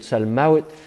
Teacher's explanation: vav se prononce ve aujourd'hui, mais à l'époque se prononçait we